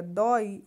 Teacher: Já na palavra dói, o i representa o som mais fraco e por isso ele é uma semivogal. Nesse caso, a vogal é o o, porque está representando o som mais forte.